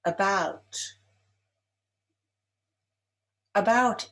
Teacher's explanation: About is stressed on the second syllable.